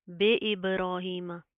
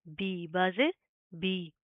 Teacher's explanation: مجہول نہیں کریں گے، معروف پڑھیں گے، بازر بی ہوتا ہے